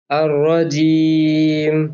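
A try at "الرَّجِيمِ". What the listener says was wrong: और अब ये रॉ को थोड़ा सा पुर कर लें, और रजीम।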